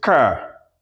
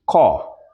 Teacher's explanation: The Americans have the rhotic pronunciation, while the Britons have the non-rhotic.